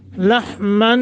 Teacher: اگر ملا کے پڑھیں گے تو اخفا ہوگا رک جائیں تو نون تنوین کو ختم کر کے الف پہ رکیں گے